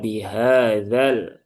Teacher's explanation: Maka ini alifnya hilang, nah, sehingga zalnya menjadi pendek, terbaca bihadzal, bukan bihadzal ba. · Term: alifnya dihadzaf